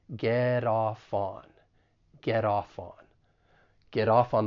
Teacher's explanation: keep in mind that the final T and get once again I'm from the US so I will pronounce it as a flat T